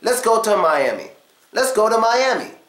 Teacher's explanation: But to sound more casual, we schwa to. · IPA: ə